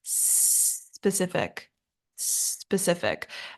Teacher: they add an e sound at the beginning but it should just start with an S